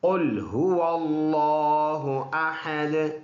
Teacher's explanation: قاف موٹا ہے اور ہا سینے سے پڑھیں گے، واو ہونٹوں سے ادا ہوتے ہیں